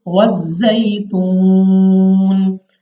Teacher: या साकिन से पहले जबर, तो या लेन। अब यहाँ पे हमने इसको खींचना नहीं है, ये या मद्दा नहीं है, क्योंकि या साकिन से पहले जबर है।